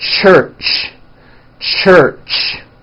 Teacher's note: let's start with the CH it's a common sound in English it's a combination of the T sound and the SH sound · it's an unvoiced sound and you can hear the sound for example at the beginning and at the end of the word church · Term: CH sound